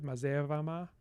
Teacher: Then we strengthen this schwa because it is stressed, so mazevama. Then we neutralize B and V intervocalically to the voiced bilabial fricative